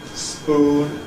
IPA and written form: spuːn (spoon)